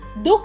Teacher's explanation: विसर्ग वाले अक्षर पर बलाघात होता है, जैसे दुख। दुख शब्द में दू पर बल दिया गया है, इसीलिए बलाघात है।